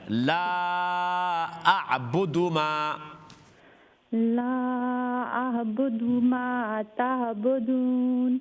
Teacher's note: ہاں لیکن یہ دیکھیے لا جو ہیں ان میں مد جائز منفصل ہے، اوکے، لیکن اعبدو دال کے اوپر، اعبدو میں جو دال اس کے اوپر ضمہ ہے تو دال کو لمبا نہ کرے